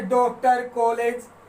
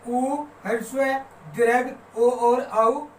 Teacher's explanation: ऐसे स्वर है जिनका उच्चारण करते समय होठ गोलाकार आकृति में हो जाते हैं या वृत्त की शेप में हो जाते हैं, उसे हम वृत्तमुखी स्वर कहते हैं।